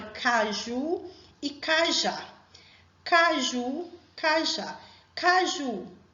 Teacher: caju qual é a sílaba forte é o ju a última